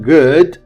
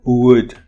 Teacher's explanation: if you want to do good the back should be up your lips should be open so the front would be down if you want to do wood the front should go up your lips come together the back which is your tongue comes apart from your velum